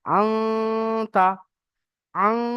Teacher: আং যখন বলবো আমার মুখ বন্ধ হয়ে যাবে, আমার আওয়াজটা নাকের মধ্যে চলে যাবে, আওয়াজটা নাকের মধ্যে থেকে আসবে, আং, তা, মুজিরু, শুধুমাত্র নুনের আওয়াজটা নাকের মধ্যে যাবে। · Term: গুণনা